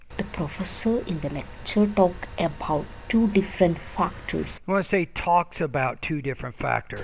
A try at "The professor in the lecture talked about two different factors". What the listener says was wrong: I want to say talks about two different factors. And as you're speaking, you want to have higher and lower tones, right? Not just one tone. So go to pronunciation lessons 36 through 40 to learn more about the tonal patterns of American English.